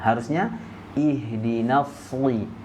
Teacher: karena huruf shad dia sifatnya adalah huruf tebal, isti'la. Nah, cara membacanya itu dengan mengangkat pangkal lidah kita ke langit-langit